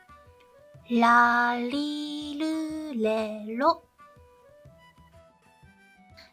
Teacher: I want you to put your tongue on the top palate of your mouth, to the place where you put your tongue when you say ta. Instead of making a ta or the T sound, try to say la with the placement of your tongue over there. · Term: Japanese la sound